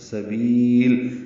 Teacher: لام پہ رک گئے ہیں وقفاً تو لام پہ اظہار ہوگا اور با کو اب لمبا کر لیں گے مد عارض سکون بنا کے